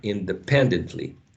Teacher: So the third syllable would be the stress syllable